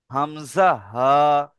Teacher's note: 1 নম্বর মাখরাজ দিয়েছে হালাকের বা কণ্ঠনালীর শুরু হতে উচ্চারিত হয় হামজা হা